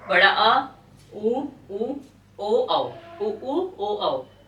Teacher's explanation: और पश्च स्वर में आपका बड़ा आ, उ ओ औ, ओ औ, ये आपका पश्च स्वर में आ जाएगा।